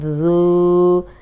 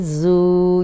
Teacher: ذال الٹا پیش ذو، ذال الٹا پیش ذو۔ ذال نرم پڑھیں گے، سیٹی کی آواز نہیں آئے گی، اگر ذرا سی بھی سیٹی کی آواز آئی تو زا بن جائے گا۔